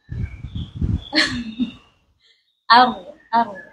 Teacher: Karena huruf ro itu ada getarannya atau ada sifat takrir.